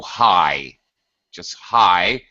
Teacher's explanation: we just get rid of the T sound